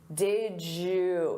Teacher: Native speakers will combine did you and say did you. Did you. So you hear a j sound. Did you. Or we can reduce that to did ya or did ya.